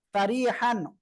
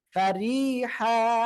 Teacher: এক জবর বাদ দিয়ে এক আলিফ টেনে পড়বো